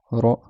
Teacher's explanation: le bout de la langue qui vient derrière les dents